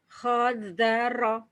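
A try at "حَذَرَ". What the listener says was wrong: Zal. Ha, bukan ho ya. Ha. Hadaro.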